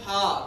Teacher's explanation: हा कैसा होता है दोस्तों, आपका सघोष होता है, अर्थात हा का उच्चारण करने पर भी स्वर तंत्रियों में कंपन होता है। बोल के देखिए हा, क्यों, क्योंकि हमने कहा है हा का उच्चारण कहाँ से होता है, कंठ में होता है।